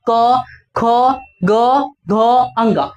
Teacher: क में जितना आएगा सबका उच्चारण स्थान क्या हो जाएगा कंठ हो जाएगा